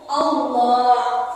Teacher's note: Karena pada lafaz jalla Allah didahului huruf yang berharakat fathah. Tafkhim ini dibaca tebal. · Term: huruf tafkhim